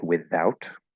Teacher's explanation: without can also be pronounced with a voice th